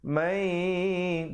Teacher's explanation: Di situ jadi bunyi idgham bi gunnah, masuk beserta dengung. Mai dengan kadar panjang 2 harakat.